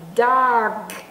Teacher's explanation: là chữ K nhưng mà tôi nói dog chữ g g nhưng mà mình không có nghe ra chữ G mà cái chữ g nó bị nuốt ở trong đây